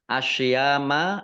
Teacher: alif lam syamsiyah karena tidak dibaca langsung masuk ke huruf berikutnya yaitu shot ditandai shotnya ada tasdidnya